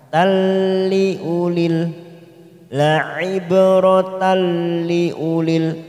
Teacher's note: Tak marbuta berharokat fathah tanwin bertemu lam namanya idgham bila guna hanya masuk tanpa ditekan